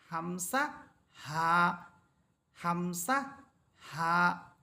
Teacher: হলকের শুরু হইতে দুটি হরফ উচ্চারিত হয় একটি হচ্ছে হামসা অপরটি হচ্ছে হা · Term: এক নাম্বার মাখরাজ